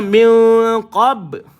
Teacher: ada Qalqalah pada ba lantun yang kecil